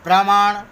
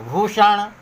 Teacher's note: दंत न के जगह पर टवर्गी ण में बदल जाता है